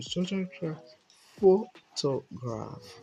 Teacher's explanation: the energy comes from pho. So we now began to relax to graph. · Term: primary stress